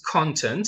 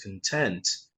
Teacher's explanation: this is content stress on the first syllable